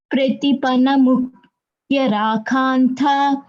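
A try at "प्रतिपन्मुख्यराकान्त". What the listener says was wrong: Good, ma, it is pratipan. It's not pratipana. It's pratipan mukhya rakhanta. Mukhya rakhanta.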